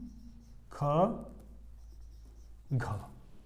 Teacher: उच्चारण करने में जो श्वास बल है ना वो थोड़ा ज्यादा लगता है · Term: महाप्राण